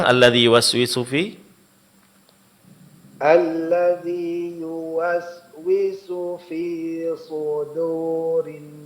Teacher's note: huruf dal itu dipertahankan tipisnya. Jangan terpengaruh oleh tebalnya huruf shad.